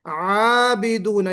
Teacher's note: वला अंतुम आबिदून, अच्छा आबिदून को बाज लोग आबिदून पढ़ देते हैं, आबिदूना, तो ये आबुदू जैसे है ना, वैसे आबिदूना पढ़ देते हैं, ये गलत है। आबिदूना यहाँ पे हमजा नहीं पढ़ना है, सिर्फ आइन है।